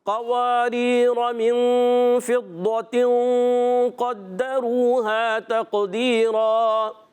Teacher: تا کو قاف سے ملائیں، قاف حرف قلقلہ میں سے بھی ہے، حرف مستعلیہ میں سے بھی ہے، قلقلہ بھی ہوگا اور پر بھی ہوگا